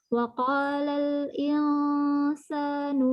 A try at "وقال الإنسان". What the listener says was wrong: وقال الإنسان ترقيق بس